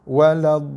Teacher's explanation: Harap jelas Saya tekan lam baru lepaskan. Jangan sekadar menyentuh makhraj lam. Tak boleh sentuh. Dia perlu tekan sekejap, lepas. Sebab lam tu bersabdu.